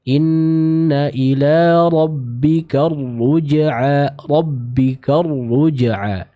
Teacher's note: ra-nya berharokat dhammah, maka tebalkan pembacaan dari huruf ra tersebut ya, karena dia berharokat dhammah yang seperti kita telah jelaskan pekan lalu ya. · diberi hentakan serta ditebalkan pembacaan dari huruf ra ini. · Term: huruf ra yang bertasydid